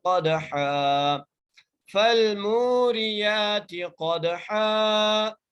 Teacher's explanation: موٹا کر کے پڑھنا ہے، قاف کو دال سے ملانا ہے، دال پر قلقلہ کرنا ہے کیونکہ دال حرف قلقلہ میں سے ہے اور دال ساکن ہے